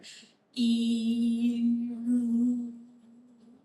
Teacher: start saying e and then pull my tongue back you can hear it slide back to U